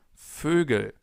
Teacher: Try to pronounce an o. So the German version of an o and then round your lips and you get fugal. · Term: O with the two dots